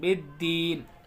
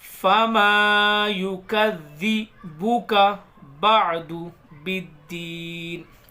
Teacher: با کو ڈائریکٹ دال سے ملا کے پڑھیں گے. یہ الف اور لام دونوں نہیں پڑھے جائیں گے. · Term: حروف شمسی